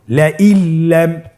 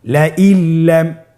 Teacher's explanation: নুন সাকিনকে আমাদেরকে পরবর্তী হরফের সাথে মিলিয়ে গুণা ছাড়া পড়তে হবে